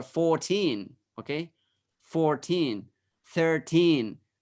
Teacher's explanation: 14, 13, those words, they have 2 stresses.